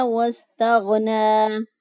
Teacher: غین جو ہے اس کو اقصی حلق سے ادا کریں گے